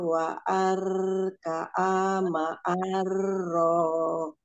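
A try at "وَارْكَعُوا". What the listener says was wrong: War ya, jangan waar, nggak ada alif fathahnya. Warka'u, warka'u.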